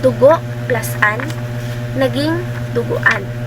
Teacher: ang ponemang O sa huling pantig ng salitang ugat na hinuhulapian o salita ng inuulit ay nagiging U